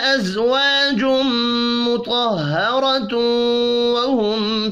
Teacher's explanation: تنوین کے بعد واو ہے تو یہاں پر ادغام ہوگا، غننے والا ادغام